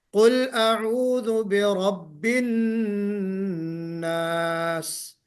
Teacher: جب ناس کہیں گے تو آپ کی ایک سیٹی بجنی چاہیے. اس سین کو ہم کہتے ہیں حرف صفیر.